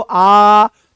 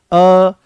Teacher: आ तो पूरा खुला बोलोगे अ तो आधा खुलता हुआ दिखाई देगा